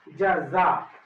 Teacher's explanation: جیم کا مخرج زبان کی تالو بیچ کا حصہ، زبان کے بیچ کا حصہ تالو میں سٹائیں گے